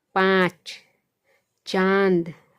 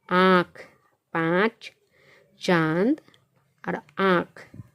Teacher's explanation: मुंह से भी आवाज़ निकल रही है और नाक से भी आवाज़ निकल रही है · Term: अनुनासिक